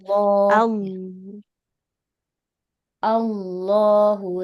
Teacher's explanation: Tapi Allah dia lamnya tebal.